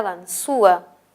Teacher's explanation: Y la que suena más es la U, ese es un hiato acentual.